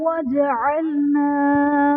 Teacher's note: جیم حرف قلقلہ ساکن ہے تو یہاں پر قلقلہ خوب ظاہر کریں گے